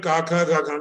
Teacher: you have Ka, which is unvoiced. And then it's Mahaprana Kha. Then Ga is a voiced vowel. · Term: gutturals